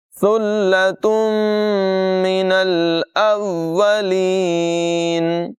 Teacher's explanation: گے اور لام کے ساتھ ملائیں گے، ثلۃ من یہاں پر تنوین کو میم کے ساتھ ملا کر ادغام کر کے اور غنہ کر کے پڑھیں گے